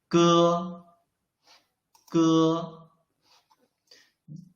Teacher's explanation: you can clearly feel that the root of your tongue is blocking the airflow